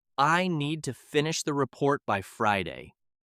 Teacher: The important words are need, finish, report, and Friday. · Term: Sentence stress